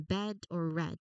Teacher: Even at the end of a word, it is crucial to keep your voice on until the very last second, so the D sounds distinct and strong.